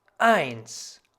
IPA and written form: aɪ̯ns (eins)